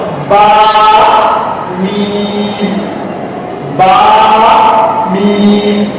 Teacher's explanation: দুই ঠোঁটের ভেজা অংশের মধ্যে বা মিম এগুলোকে উচ্চারণ করতে হয়।